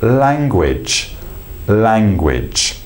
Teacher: the light L is literally we just bring the tip of the tongue to the roof of the mouth and literally just let it drop so this part comes up to the roof of the mouth · these are clear l or light L sounds which we're using with the front of the mouth